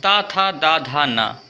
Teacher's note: ता था दा धा ना ये सभी हमारे दंत व्यंजन होते हैं।